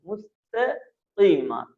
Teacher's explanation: قاف کو بھی موٹا ادا کیا جائے گا. مستقیم، تے پتلا، اگر تے کو ہم موٹا کریں گے تو بن جائے گا مستقیم، تو یہ غلط ہو جائے گا مستقیم.